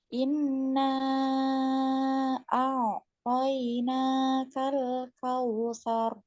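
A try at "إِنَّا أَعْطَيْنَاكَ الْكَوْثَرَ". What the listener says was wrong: dipanjangkan lagi gunnahnya nunnya inna gitu ya. Kal kausar, jangan kal kausar, tapi kal kausar.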